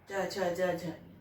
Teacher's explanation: इनका उच्चारण स्थान तालु है, तालु से बोले जाना चाहिए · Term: तालव्य वर्ण